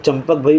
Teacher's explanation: એ ચંપકમાં આપણે મ બોલીએ છીએ કેમ કે પ છે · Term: અનુનાસિક